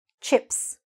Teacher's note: Just one syllable, chips. What's important here is that the I is really short. So make sure you're saying it fast and short.